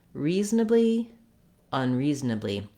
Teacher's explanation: You want to feel that that re is really the length. You don't want a lot of length on the un.